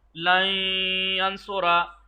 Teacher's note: इदगामे गुन्ना होगा यानी इदगामे गुन्ना यानी नाक की फिजा से खींच कर अदा होगा